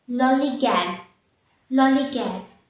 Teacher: The stress is on the first syllable lol.